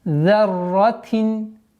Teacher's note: Ра удваиваем и уходим на танвин касра.